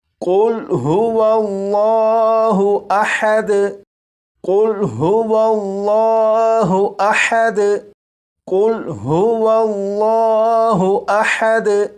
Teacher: اس لفظ کے شروع میں جو قاف ہے اسے پور یعنی موٹا پڑھیں گے